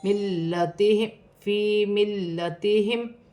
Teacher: فی ملتہم میم ساکن میں غنہ نہیں ہوگا.